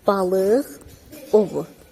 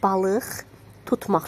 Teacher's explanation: Saitlə başlayan söz gəlirsə, olur q kimi, amma samitlə başlayan söz gələrsə, şəkilçi gələrsə, heç nə gəlməzsə, olur x kimi.